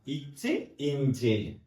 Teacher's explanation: நாவினுடைய இடைப்பகுதி அன்னத்தினுடைய இடைப்பகுதி இச்ச இஞ்சி அப்படிங்கறது உருவாகுது